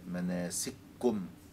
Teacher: فهنا أدغم الكاف في الكاف وشددها